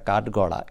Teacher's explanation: ঠ হলো বর্গের দ্বিতীয় ধ্বনি কিন্তু এটি উচ্চারণ যখন শোনায় তখন অনেকটা কাঠগড়া এরকম শোনায় অর্থাৎ তৃতীয় ধ্বনি ড এর মতো শোনায়